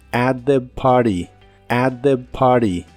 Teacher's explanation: La T de la palabra party la puedes omitir en inglés americano y suena solo como at the party, at the party.